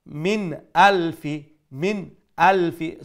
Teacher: After the nun sakin is the letter Hamza, and Hamza is one of the throat letters from the 6 letters of Huruf Halki. So we'll pronounce the nun sakin with clarity without any nasal sound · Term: nun sakin izhar